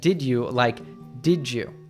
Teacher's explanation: When we have a D followed by U, it usually morphs to a ju or ja. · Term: connected speech